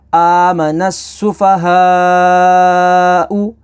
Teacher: اب یہاں پر حروف مدہ کے بعد حمزہ اسی کلمے میں ہے تو مد متصل ہوگی، اسے 2 سے 4 الف تک کھینچ کر پڑھیں گے